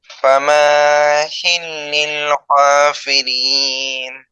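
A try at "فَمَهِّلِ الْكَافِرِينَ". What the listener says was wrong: ফামা হিলিল, মিমটা টান হবে না, হ্যাঁ। ফামা হিলিল কাফিরিন, কাফিরিন তিন আলিফ টান।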